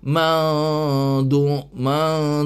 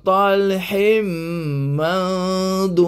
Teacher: Nun mati bertemu dengan dot. Dot ini adalah huruf ikhfa, maka kena baca samar-samar. Man ini kena baca samar-samar.